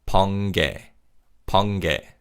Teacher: because of nasalization, the 니은 받침 in 번 is pronounced as an 이응 sound.